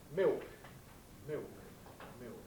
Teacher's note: That's what L vocalization is. It's losing the alveolar component of dark L. · It's the dark L that is becoming vocalized. What happens in London speech, for example, in Cockney, is that we get a kind of O vowel output. Thus, in a word like milk, dark L, we get instead a kind of new diphthong, an ill diphthong, thus milk, milk, milk.